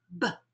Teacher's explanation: if I add voice to the sound made when my lips push together, that makes a B sound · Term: vocalized consonants